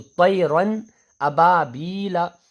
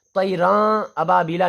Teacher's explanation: تو طیرن ابابیلا، طیراں ابابیلا نہیں کہنا ہے، طیراں کہنے میں اخفا ہو جائے گا، لیکن یہاں پہ کرنا نہیں ہے، غنہ اخفا کچھ بھی نہیں، ظاہر کر کے پڑھنا ہے